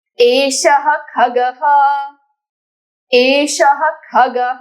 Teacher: यहां पे दंत्य स नहीं है। यहां पे मूर्धन्य श है।